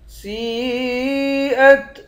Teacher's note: سین پر مد ہے، اس مد کو 5 الف کے مقدار کھینچ کر پڑھتے ہیں۔